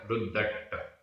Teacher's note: रुद्द अधदा पुरदा और इसमें है छोटा अ प्लस अट्ट छोटा अ, दोनों छोटा अ मिलकर बड़ा अ हो गया, लेकिन आधा टा और पूरा टा ये संयुक्त अक्षर है और संयुक्त अक्षर से पूर्व जो दीर्घ स्वर है वो प्राकृत में ह्रस्व होता है, छोटा हो जाता है, तो इसलिए वापस वो छोटा हो गया।